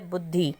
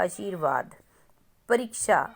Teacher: स्वर है तो इस उच्चारण हम जल्दी से करते हैं तो जब हमारी ई की मात्रा की आवाज को हम जल्दी से बोलते हैं तो वहां पर छोटी ई की मात्रा लगती है जहां हम टाइम लगा के ई की मात्रा को बोलते हैं वो होता है हमारा बड़ी ई